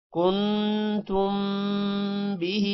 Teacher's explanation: نون پر غنہ ہوگا، میم پر بھی غنہ ہوگا کیونکہ آگے با ہے اور ہی لمبا ہوگا کیونکہ ہا کے نیچے کھڑی زیر ہے.